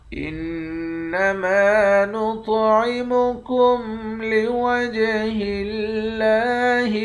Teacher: نون مشدد پر غنہ کرتے ہیں، میم کے بعد الف ہے، ایک الف کی مقدار کھینچ کر پڑھیں گے، طا کو موٹا بھی پڑھیں گے، طا پر قلقلہ بھی کریں گے، جیم پر قلقلہ کریں گے۔